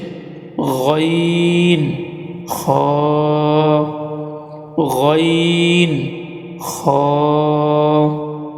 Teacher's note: হলকের শেষ ভাগ হইতে 2টি হরফ উচ্চারিত হয়, সেগুলো হচ্ছে গইন খ, গইন খ।